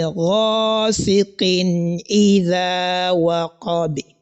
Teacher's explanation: after the tanween has been clearly heard, you are also going to pronounce the sound of this al-hamza very clear, which is kasra. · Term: al-izhar